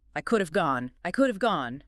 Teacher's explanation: And it sounds like should've, the H is gone, and the A vowel reduces to a schwa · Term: Dropping and reduction